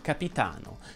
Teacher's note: è una piana perché l'accento cade sulla penultima sillaba